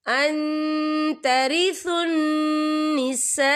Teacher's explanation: یہ مد جو ہے مد متصل ہے، اس کی مقدار 4 حرکت کے برابر ہے، تو ہم اسے 4 حرکت کے برابر کھینچ کے پڑھیں گے.